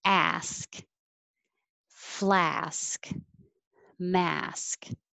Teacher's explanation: all have the same vowel ah so open a lot keep your lips back